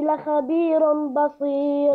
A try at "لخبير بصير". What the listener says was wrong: لا، فخم الخاء هنا، لا خبير بصير.